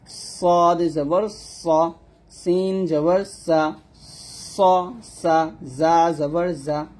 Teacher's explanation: সদ, সিন এবং হচ্ছে জা, এই 3টা অক্ষর আমরা সবসময় শীষ দিয়ে উচ্চারণ করবো। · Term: সফির